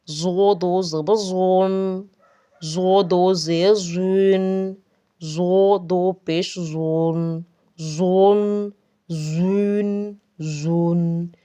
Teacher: اس کو موٹا پڑھیں گے زو کا، کیونکہ حروف مستعلیہ میں سے ہے